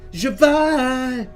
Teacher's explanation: the emphasis is on the second syllable, and that's difficult to do